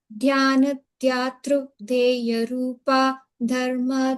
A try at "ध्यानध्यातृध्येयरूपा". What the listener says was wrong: So here dhyatru, you see this T and there is no U sound, not dhyatru, but dhyatru, like Krishna, kr, r, okay? Like T. Dhya, dhyana dhyatru dhye, dhyana dhyatru dhyeya rupa.